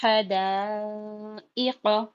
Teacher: کو جاتی ہے، اور قاف پہ زبر کی حرکت ہے، اور زبر کو جلدی پڑھتے ہیں اور زبر کی آواز اوپر کو جاتی ہے · 4 سے 5 الف کے برابر کھینچ کے پڑھیں گے، اور حمزہ کے نیچے زیر کی حرکت ہے تو جلدی پڑھیں گے، اور زیر کی آواز نیچے کو جاتی ہے